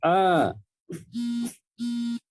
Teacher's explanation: मध्य स्वर में केवल एक स्वर आपका आता है, वह है अ। आप जब अ का उच्चारण करते हैं तो देखेंगे कि जिह्वा जो है एकदम नॉर्मल स्थिति में रहती है, बहुत ज्यादा इधर उधर नहीं मकती, केवल बीच का हिस्सा ही टच करता है ताल से।